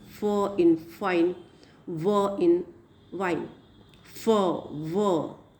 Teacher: lip is active articulator and upper teeth is passive articulator.